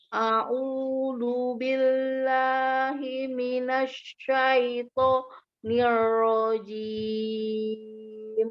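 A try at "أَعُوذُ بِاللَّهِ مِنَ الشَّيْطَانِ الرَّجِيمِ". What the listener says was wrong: Ya, zalnya masih lari ke dal kecil ya.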